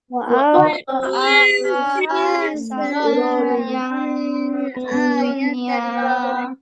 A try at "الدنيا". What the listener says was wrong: দুনিয়া না, নুন সুকুন, নুনে চাপ দিতে হবে, দুনিয়া